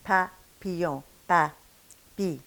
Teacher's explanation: see if you don't feel a little bit less puffiness coming at papillon